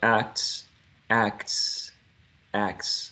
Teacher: We go from k to s immediately